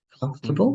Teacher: And it's like you don't have the O, right?